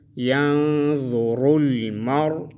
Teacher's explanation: ینظر میں نون میں اخفا کریں گے را کو موٹا پڑھیں گے